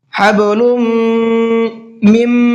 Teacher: یہاں پر ادغام کریں گے اور ساتھ ساتھ غنہ کر کے پڑھیں گے. حبلم میم، یہاں بھی غنہ کر کے پڑھیں گے تو دونوں جگہ پر غنہ ہونا ہے.